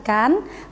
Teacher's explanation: pelafalan bunyi vokal I dalam kata ikan, kata ini jelas diucapkan dengan bibir yang tidak melingkar. Akan sangat berbeda diucapkan dengan kedua bibir yang melingkar.